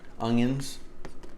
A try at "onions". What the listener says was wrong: Oh, and it doesn't have a G in it. So try it again. He says it Ungions. Onions.